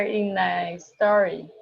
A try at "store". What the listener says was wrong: Okay, pronunciation in a store. Se você falar story, eles vão pensar que é esse aqui, ó, lá do Instagram.